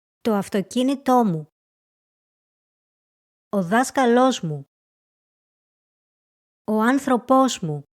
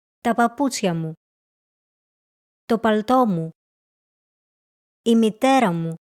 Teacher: Words with stress on the third to last syllable take a second stress when followed by a weak personal or possessive pronoun.